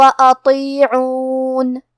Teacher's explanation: طو حروف التفخیم میں سے ہے تو ہم یہ حرف کو بھاری آواز میں اور منہ پھلا کے پڑھیں گے. آخری میں حرف النون پہ رکیں گے تو اس پہ جزم سے رکیں گے، لہذا ہمیں نون کو ظاہر کرنا ہے.